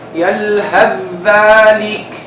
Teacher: يلهث. You completely drop the tha, you stress the dhal.